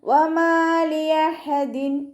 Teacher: വാവ് ഉച്ചരിക്കുമ്പോൾ ചുണ്ടുകളൊന്ന് സർക്കിൾ ചെയ്ത് കൊടുക്കുക. മീമിൻ്റെ കൂടെ അലിഫ് മദ് വന്നു, 2 കൗണ്ട് നീട്ടിക്കൊടുക്കുക.